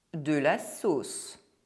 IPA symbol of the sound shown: s